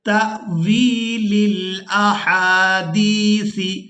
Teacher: تا کو حمزہ ساکن کے ساتھ ملائیں گے تو جھٹکے کے ساتھ ادا کریں گے اور واو کو یائے ساکن کی وجہ سے کھینچ کر ادا کریں گے کیونکہ یہ یائے مدہ ہے۔